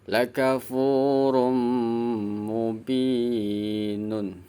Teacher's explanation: Binya dibaca panjang sebab ada kasrah diikuti ya sukun.